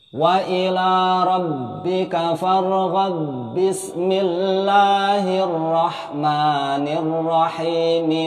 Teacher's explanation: ba-nya akhir surah Al-Insyirah ini diidghamkan ke ba-nya bismillah. Kemudian akhir harokat kasrah pada mi tetap terbaca, langsung disambung dengan wa pada awal surah At-Tin.